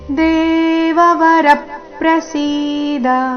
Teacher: ದೇವವರ ಶಬ್ದದಲ್ಲಿ ರ ಮೇಲೆ ಆಘಾತ